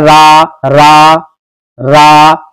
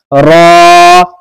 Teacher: रॉ, रा का मखरज है जबान का किनारा और कुछ जबान की पुष्ट जब पे मिले सनाया उलिया से, सनाया उलिया और रुबाई के मसूड़ों से। रॉ यानी जबान का जो किनारा है वो ऊपर को तलवे से कुछ मिलेगा और कुछ ऊपर के सामने के जो दांत हैं वहां पर उनकी जड़ में लगेगा